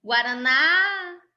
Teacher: guaraná é a última sílaba mais forte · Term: oxítonas